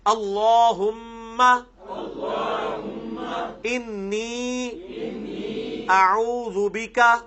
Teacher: یہ انی جو ہے نا، اس میں بھی نون جو ہے نا اس کے اوپر آپ غنہ کریں گے